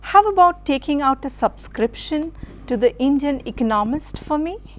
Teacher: i'm sure you noticed how there was the voice rising sometimes and falling sometimes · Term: intonation